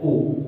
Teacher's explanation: जब हम जीभ को पीछे से, जब जीभ का प्रयोग करेंगे तो पीछे से उच्चारण किया जाए, जैसे ओ। जब ओ बोले तो आपकी जीभ देखो पीछे चली जाएगी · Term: पश्च